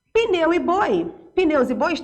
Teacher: Pneus e bois, eu tenho ditongo, ó. Só que eles são fechados